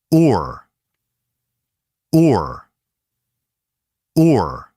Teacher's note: Do not let the rounded lip feeling disappear too quickly. Start a little rounded, then curl into /r/. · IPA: /ʊr/